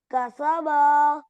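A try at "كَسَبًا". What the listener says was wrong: कसबा खींच के पढ़ेंगे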